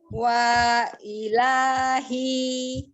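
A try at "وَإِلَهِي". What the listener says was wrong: Wa-nya pendek.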